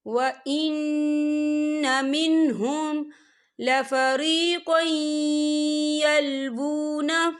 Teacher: وَلَهُمْ عَذَابٌ أَلِيمٌ وَإِنَّ مِنْهُمْ، یا دیکھیں وَإِنَّ، یہاں نون مشدد ہے تو یہاں پر غنہ ہوگا۔